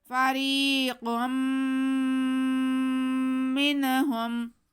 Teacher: قاف کو میم سے غنہ کرتے ہوئے ملائیں گے۔ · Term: ادغام بالغنہ